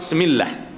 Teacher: Makhraj ba di mana? Dua bibir mulut yang dirapatkan.